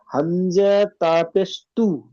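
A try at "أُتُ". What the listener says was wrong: তু নয়, হামজার উচ্চারণটা কি? হামজা শুধু হামজা পেশ কি উচ্চারণ হয়? হামজা পেশ উ উচ্চারণ হয়, শুধু হামজা পেশ উ। আর তাহলে হামজা তা পেশ উত, হামজা তা পেশ উত, তো উ এর সাথে তাটা জুড়লে কি উচ্চারণ হবে?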